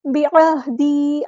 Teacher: عین کو وسط حلق سے ادا کرنا ہے